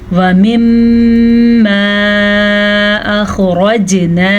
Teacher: میم پہ شد ہے تو میم پہ غنہ ہوگا، اور یہ جو مد آپ کو نظر آ رہی ہے یہ چھوٹی مد ہے، اس کی مقدار 2.5 حرکات عربیہ ہے.